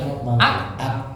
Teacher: karena dilepas dia keluar hambesnya